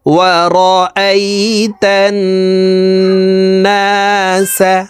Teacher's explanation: তাসদিদওয়ালা নুনের সাথে নাকের বাসি থেকে 3 সেকেন্ড পরিমাণ গুন্নাহ করে ধরে রাখতে হবে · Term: ওয়াজিব গুন্নাহ